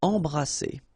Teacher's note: E-M here, and then you've got a consonant after, so you get the nasal en. So you don't hear any M, it's really in your nose.